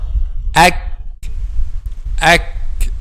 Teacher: we pronounce letter kaf using the back part of the tongue · letter kaf is a light letter because the back of the tongue is not raised